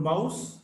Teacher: M, which is voiced bilabial nasal.